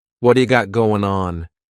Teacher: It's called a flapped T and it just rolls off your tongue in a smooth way.